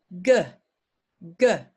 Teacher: Same as k, but I use my voice. G, k. See if you do them together and see if you can feel the difference.